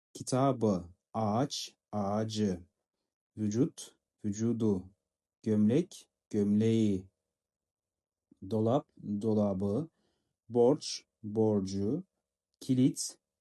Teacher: Бұл дегеніміз қатаң дауыссыздардың ұяңдануы. Türkçedeki kelime sonundaki P, Ç, T, K ünsüzleri kelime ünlü bir ek aldığında B, C, D, yumuşak G, G ünsüzlerine dönüşmektedir. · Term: yumuşama